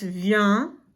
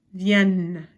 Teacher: it's a nasal sound there you don't actually hear the N but over here for the plural third person plural it's Yen